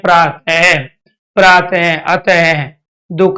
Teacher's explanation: वायु निकल रही है इसलिए विसर्ग आ गया आपका महाप्राण में